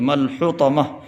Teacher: بڑا ہا حلق سے نکالنا ہے